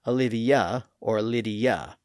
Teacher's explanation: This happens naturally and we do the same thing today in English at the end of a name like Olivia or Lydia which is sometimes pronounced as Olivia or Lydia. Again, that little Y sound naturally emerges between letter I and another vowel